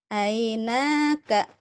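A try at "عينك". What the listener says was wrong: Pendek, nggak ada yang panjang.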